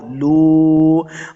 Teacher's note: لام پیش واو لو، واو مد ہے، اس کو 2 حرکات لمبا بھی کرنا ہے۔